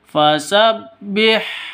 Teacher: H-nya jangan sampai ketukar dengan ko. H-nya ini di tengah tenggorokan keluarnya.